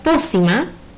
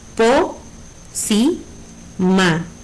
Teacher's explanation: Significa que po es mi sílaba tónica y al ser el acento en la antepenúltima sílaba es una palabra esdrújula